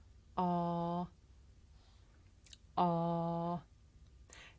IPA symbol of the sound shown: ɑ: